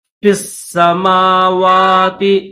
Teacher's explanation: یا نہیں پڑھیں گے، فا کو ڈائریکٹ سین کے ساتھ ملائیں گے